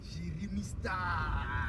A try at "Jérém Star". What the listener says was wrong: Non, Jérém, il n'y a pas le i. C'est Jérém Star. Ouais, pas Jérémy.